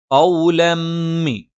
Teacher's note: തെൻവീന് ശേഷം ഇദ്ഗാമും ബിഗുന്നയാണ്. തെൻവീനിന് ശേഷമുള്ള മീമിലേക്ക് നമ്മൾ ചേർത്ത് വായിക്കും. അതോടൊപ്പം മണിക്കുകയും ചെയ്യും. ഖൗലമ്മി. ഖൗലമ്മി എന്ന് പറഞ്ഞിട്ട് അവിടെ ചേർക്കൽ മാത്രമല്ല മണിച്ചുകൂടി ഉച്ചരിക്കുന്നുണ്ട്.